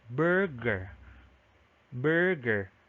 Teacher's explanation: So the first schwa there, that's supposed to be an inverted V. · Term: stressed schwa